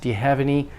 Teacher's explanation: all these function words do you have any those are function words very light unstressed